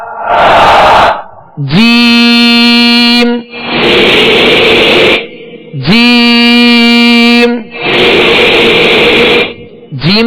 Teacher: زبان کے درمیان اور تالو کے درمیان سے جیم ادا ہوتا ہے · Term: حروف شجریہ